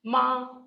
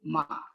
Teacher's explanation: this is the high level tone. Like ma, and this is a low tone